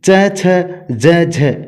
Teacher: वायु पहले मुख अवयव का स्पर्श करती है और फिर घर्षण करती हुई बाहर निकलती है। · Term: स्पर्श संघर्षी व्यंजन